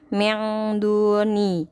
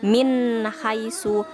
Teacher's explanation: Terus zal bertemu dengan nun sukun mangdalazi. Nah, jadi bunyi bacaan ikhfa hakiki ini ada kayak dengung-dengung hampir jadi eng gitu nak. Beda dengan izhar.